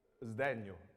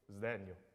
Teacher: should be voiced, the S before D